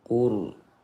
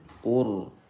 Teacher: Ra sukun setelah dhammah dibaca tafkhim.